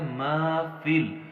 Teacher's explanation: فا کی زیر کو ہم نے لام کی جزم کے ساتھ ملانا ہے، بیچ میں جو یا اور الف خالی ہیں انہیں ہم نے چھوڑ دینا ہے